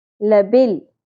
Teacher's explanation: لام ساکن پہ قلقلہ نہیں کرنا